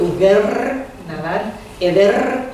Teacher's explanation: una sola R al final de dicción tiene la fuerza de doblada R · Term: vibrante múltiple